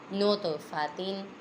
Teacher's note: تو پہ بھی دو آوازیں نکالیں گے کیونکہ یہ حروف قلقلہ میں سے ہے